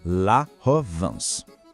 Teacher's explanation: A sílaba van não soa como em vento. É um som que sai mais pelo nariz. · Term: som nasal